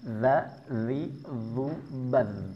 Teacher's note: Jadi huruf dzal ini enggak boleh ada hamsnya nafasnya tertahan di dalam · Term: huruf zal